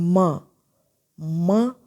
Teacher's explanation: दोनों लिप्स बंद हो जाते हैं, माउथ क्लोज हो जाता है, तो इसका मतलब एयर जो है वो माउथ से नहीं निकलेगी, नोज से निकलेगी, तो साउंड जो है वो नोज से प्रोड्यूस होगी। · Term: नेज़ल्स